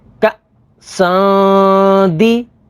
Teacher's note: تنوین کے بعد دال ہے، دال حروف اخفا میں سے، تو یہاں پر اخفا ہوگا یعنی غنہ کر کے پڑھیں گے